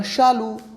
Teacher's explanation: तो शालू बोलते समय आपकी जीभ जो है वो तालवे को टच करती है